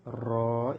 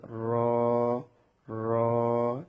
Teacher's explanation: 10 নম্বর মাখরাজ জিহ্বার আগার পিঠ তার বরাবর উপরে তালুর সঙ্গে লাগিয়ে র র। এই অক্ষরটি উচ্চারণের সময় জিহ্বার আগাটা যেন বারবার যেন টক্কর না লাগে